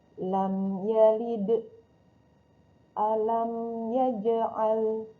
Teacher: Jadi selain mim dan ba adalah huruf izhar safawi jika sebelumnya bertemu dengan huruf mim sukun. Cara membacanya adalah yaitu suara jelas ketika mengucapkan huruf mim kedua bibir rapat sempurna seraya menahan pengucapannya satu ketukan saja. Kalau lebih dari satu ketukan dikhawatirkan akan menjadi bacaan ikhfa atau gunnah. · Jadi bibir dirapatkan sempurna, namun panjangnya hanya satu ketukan.